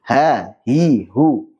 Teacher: Jadi ha dia di tenggorokan paling bawah.